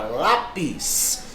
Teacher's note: é uma paroxítona porque a sílaba tônica é a penúltima